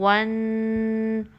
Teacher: یہ تھوڑی سی وائبریشن کی ساؤنڈ آپ کو ناک میں محسوس ہوگی، ون۔ اس طرح آپ نے اس کو 2 کاؤنٹس ٹائم دینا ہے۔ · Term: غنہ